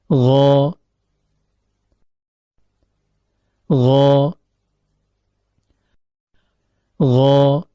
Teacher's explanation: Makhraj huruf ghain terletak pada ujung tenggorokan · Namun perlu diperhatikan bahwasanya ketika mengucapkan huruf gin, lidah tidaklah menempel pada langit-langit lunak sehingga suara tetap bisa keluar melewati rongga antara keduanya · Huruf gin keluar dari ujung tenggorokan, yaitu pertemuan antara akar lidah dengan langit-langit lunak atau yang diistilahkan dengan palatum mole.